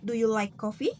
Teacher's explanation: The pitch goes up at the end of the sentence. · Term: rising intonation